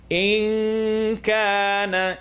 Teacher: Noon sukoon followed by kaf. Kaf is in front of the little dangly thing, the uvula. It's not in the throat.